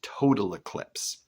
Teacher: he intentionally puts a trochaic foot a stressed unstress instead of an iambic foot an unstress stressed in order to further emphasize the totality and the kind of